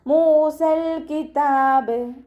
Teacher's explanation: മീമിൻ്റെ കൂടെ വാവ് മദ് വന്നു, 2 കൗണ്ട് നീട്ടി കൊടുക്കുക